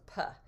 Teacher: a voiceless bilabial stop. So he would change it to puh.